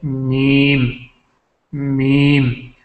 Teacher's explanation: میم جو ہے یہ بھی شفتین سے نکلتا ہے دونوں ہونٹوں سے